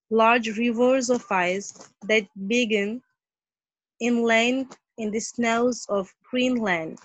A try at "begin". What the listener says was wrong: Right, begin nahi bolenge, begin. Ye ek verb hai na, to verb aur jo action words hote hai na, agar wo two syllable hon, to unke second syllable ko hi stress kiya jata hai, not first one. It's not begin.